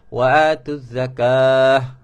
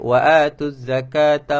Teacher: Ta marbutah dia ada dua bunyi. Kalau berhenti jadi huruf ha, kalau sambung jadi huruf ta.